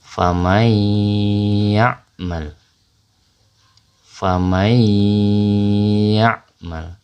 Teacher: Jadi nun sukun bertemu dengan huruf ya itu dengan suara gunnah ya atau dengung. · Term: idgham bi gunnah